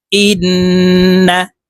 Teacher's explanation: গুন্না হরকতের বামে নুনের উপরে তাসদি আছে তো এই হামজা তাশদি নুনের সাথে নাকের পাশে থেকে গুন্না করে পড়বো গুন্নাটি তিন সেকেন্ড পরিমাণ ধরে রাখতে হবে দেখুন এভাবে পড়বো হামজাহ নুন জের ইন্ নুন জবর না ইন্না